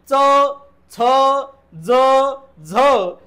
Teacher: जेव्हा आपल्या जिभेचा शेंडा टाळूला लागतो आणि दाताला लागतो तेव्हा त्याला म्हणायचं दंत तालव्य।